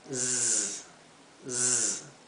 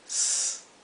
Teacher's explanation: están eh donde la s viene seguida por una vocal la s se pronuncia como un zumbido Z Z mientras que esta se pronuncia s más como un silvido como la española